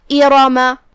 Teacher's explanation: دھیان رہے ہم صرف را کو بھاری آواز میں ادا کریں گے · ایراما آخری میں میم پہ زبر ہے. دھیان رہے ہم میم کو صرف زبر سے ادا کرتے ہیں، اپنی آواز لمبی نہیں کریں گے تاکہ مد الف نہ ظاہر ہو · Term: تفخیم